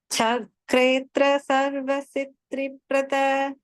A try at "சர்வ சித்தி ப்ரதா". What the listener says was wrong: சித்ரி இல்ல, சித்தி பிரத.